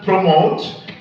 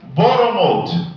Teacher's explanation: we changed the P to a b and we inserted vowels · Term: consonant substitution voicing